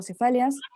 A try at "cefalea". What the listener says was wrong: Cefalea, pronuncia cefalea. pronuncia cefalea, doctora, no cefalia, cefalea. Cefalea.